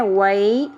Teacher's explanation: واو زبر کے بعد یا حرف لین ہے، نرمی سے پڑھنا ہے